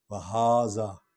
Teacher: ہا حرف تنبیہ ہے، اس کو لمبا کریں گے، اس پر الف کھڑا ہے